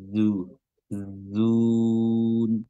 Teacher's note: huruf zai ya, makhrajnya adalah ujung lidah bertemu dengan gigi seri bawah. Zu zun ya, dan dia dhammah, bibir dimonyongkan ke depan.